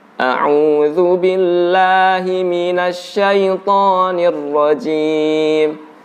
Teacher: mengucapkan huruf Jim ini dari depan dari ujung lidah atau ada percampuran dengan ujung lidah sehingga ada unsur udara yang keluar